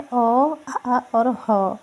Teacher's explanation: कंठ में, कंठ जिसका उच्चारण स्थान है, इसमें अ आते हैं, आ आते हैं और ह आते हैं।